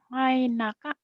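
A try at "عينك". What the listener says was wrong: Ngai. Jangan ngai. Ai. Ngai. Ngai. Ngai. Ai. Ngai aja. Ainaka.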